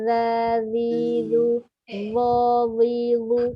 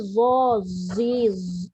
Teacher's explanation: Dia keluar hujung lidah tu menyebabkan kita punya sofir tu hilang.